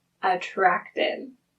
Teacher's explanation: It ends in a T sound. So we know we need to add the extra syllable and the end sound will be a D.